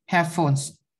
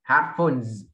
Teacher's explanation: Âm z nha, không phải âm s nha.